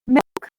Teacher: ridge it might not necessarily fully make contact with it milk this l sound is called dark l and we make dark l before a consonant or silence · You should notice that the back of the tongue is higher towards the soft palate, and that while the tip of the tongue does move towards the alveolar ridge, it might not necessarily fully make contact with it.